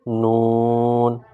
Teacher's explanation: زبان کا کنارہ جب اوپر کے دانتوں کے مسوڑوں سے لگے تو یہ حرف ادا ہوتا ہے